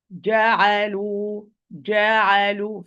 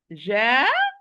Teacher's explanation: when we pronounce the Jim, articulation point is closed.